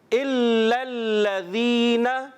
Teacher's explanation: ذال کی ادائیگی پیارے بچوں اور مدنی چینل کے ناظرین، اس کو ہم ذال کلیئر کریں گے، زا سے نہ بدل جائے